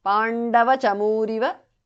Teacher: visarga changes to repha